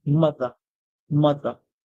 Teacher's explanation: The British would make it short, so you hear mother, mother, like a schwa sound